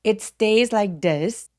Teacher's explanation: TH가 울림이 있는 TH예요